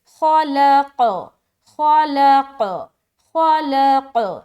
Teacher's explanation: یہ سکون عارضی ہے تو اسٹرانگ قلقلہ کریں گے